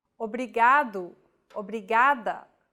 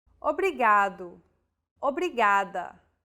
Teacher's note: think of the quick tapping motion your tongue makes as it strikes the top gum ridge in words like ladder or butter